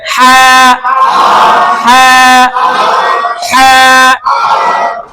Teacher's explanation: লম্বা হা হলকের মধ্য হতে